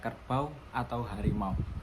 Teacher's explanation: di akhir kata-kata ini bunyi vokalnya meluncur membentuk bunyi mirip konsonan semivokal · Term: diftong